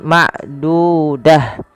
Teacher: Apabila ada ta marbutah terletak di akhir bacaan kita, maka ia diganti dengan huruf ha